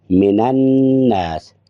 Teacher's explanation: جب اس کو ملایا تو من الناس، نون کو نون میں ادغام کر دیا، اس وجہ سے اس کا رنگ جو ہے وہ چینج ہے، یعنی اس کا رنگ سرخ ہے اس وجہ سے کہ یہاں پر ادغام ہو رہا ہے۔